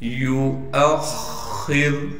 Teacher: खा पर तशदीद है और खा को मोटा करके पढ़ेंगे